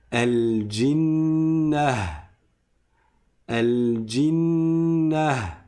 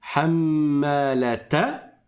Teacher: C'est que je transforme le ta en ha.